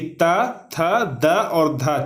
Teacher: तो त वर्ग में जितने सारे भी वर्ण आते हैं उसका भी उच्चारण स्थान दांत से होता है